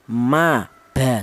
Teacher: untuk huruf mim ini dan huruf ba ya itu dihasilkan dari kedua bibir yang rapat. Kita bilang ma, kita bilang ba, itu kedua bibir atas atau bibir bawah itu berperan yaitu nempel ya, rapat ma ba seperti itu.